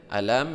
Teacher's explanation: mimati bertemu dengan ta izhar syafawi tidak berdengung